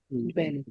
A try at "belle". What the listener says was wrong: It's not ballet, it's belle.